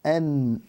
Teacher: Il est tellement éloigné du point de sortie de an-noun, et vous pouvez le visualiser mentalement en disant n. Vous remarquerez que le bout de la langue vient se poser sur la base des incisives des incisives supérieures.